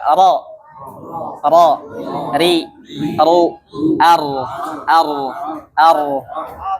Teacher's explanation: bergetarnya ujung lidah ya, lidah bagian ujung. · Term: takrir